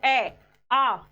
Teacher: आपके होठ जो हैं वह गोल नहीं हो रहे हैं। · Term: अवृत्ताकार